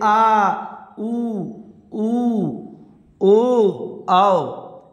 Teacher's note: जीभ का पश्च भाग, पिछला भाग सक्रिय होता है, उसे हम पश्च स्वर कहते हैं।